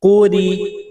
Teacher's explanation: قاف کو موٹا کرنا ہے، را کو باریک